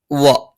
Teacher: വ ചുണ്ട് വൃത്താകൃതിയിൽ വെച്ചുകൊണ്ടാണ്